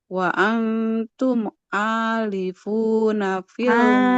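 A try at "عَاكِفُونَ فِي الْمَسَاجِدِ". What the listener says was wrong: Akifuna. Huruf kaf. Nah, akifuna.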